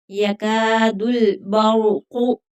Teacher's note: यका का काफ बारीक पढ़ा जाएगा। बर्क़ु ये काफ जो है नुक्ते वाला ये मोटा पढ़ा जाएगा।